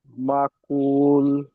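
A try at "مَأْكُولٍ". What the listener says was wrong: হুম, মা একটু ঝাটকা মতন হবে। মাকুল।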